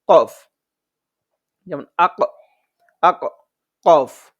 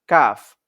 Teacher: চার নং মাখরাজ যে কফ আছে কফ হচ্ছে মোটা করে পড়বো আর কাফ হচ্ছে শক্ত করে পড়বো